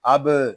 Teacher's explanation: आगे बा साकिन है, इसमें कलकला होगा। इसको अब इस तरह नहीं पढ़ेंगे, इसको पढ़ेंगे अब।